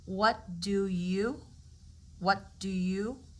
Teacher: we just put all three words into one you've got the T as a stop consonant